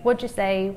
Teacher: the t and d kind of morph into one